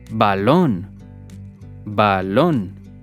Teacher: we stress the syllable lón